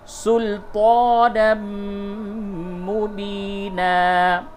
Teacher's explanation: تنوین کے بعد میم ہے، ادغام مع الغنہ ہوگا